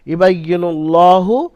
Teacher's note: আল্লাহ শব্দের পূর্বে নুনের উপরে পেশ এসছে, পেশ। আল্লাহ শব্দকে পুর করে পড়তে হবে।